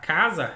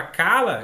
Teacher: Ela começou a usar o l assim como ela começou a usar o Z na mesma posição. Só que a gente tá falando de um fonema que é fricativo, alveolar, vozeado e aqui eu tenho uma líquida lateral vozeado, oral